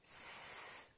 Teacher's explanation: Put your fingers on your vocal cords again, and let's say S. Do you feel a vibration this time? No. Therefore, S is a voiceless consonant.